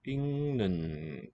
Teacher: it's written as a g, a stop, but pronounced as an eng, a nasal, so it assimilates in nasality to the following consonant